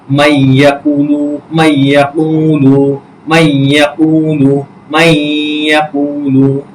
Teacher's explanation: নুন সাকিনের পর ইয়া আসছে, সুতরাং আমরা এই যে ইয়াকে তাসদিদ দিয়ে কিন্তু পড়ছে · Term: ইদগামে বা গুন্নার